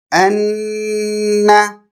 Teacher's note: ہم نون کی آواز کو تھوڑی دیر ناک میں روک دیں گے، 2 حرکات کے برابر، 2 بیٹس کے برابر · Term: تشدید